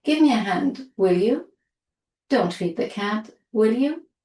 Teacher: we use will you with a rising intonation for both positive and negative imperatives, orders.